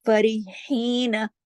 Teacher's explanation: یہ جو ہا ہے گلے میں سانس کی طرح یہ چلتا ہے نا، فرحین گلے سے پڑھا جاتا ہے